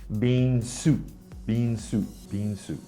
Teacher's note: the thai students sometimes will drop the ending consonant so sometimes it will sound like bean soup bean soup bean